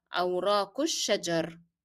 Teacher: That is because here I stopped, my breath is out. So once I stop, I would drop the pronunciation of kesra · you drop the sound of alif and you drop the sound of lam in الشجر. That's because alif in the definite article is preceded by a short vowel and then lam is followed by a shadda letter.